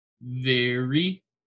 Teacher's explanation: that R sound, V to the R comes very quickly. So very.